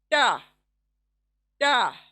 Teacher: ता पतला होगा, देखें, ता, ता पतली आवाज, ता। जबान की नोक सामने के दांतों के मसूड़े, लेकिन जबान चौड़ी होगी, उससे अदा होगा ता, ता।